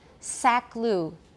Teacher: the lip rounding for the ooh may start in the co which is separated by two segments and a word boundary